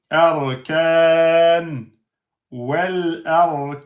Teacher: Un nun soukoun précédé par une lettre de prolongation. Donc, on a le droit de faire 2, 4, 6.